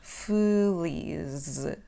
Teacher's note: We can drop the letter E in the word feliz, so it becomes like the schwa sound in English